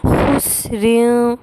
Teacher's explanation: نون ساکن کی آواز کو ناک میں چھپا کر پڑھیں گے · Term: اخفاء